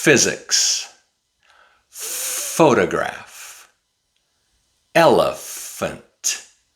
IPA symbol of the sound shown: f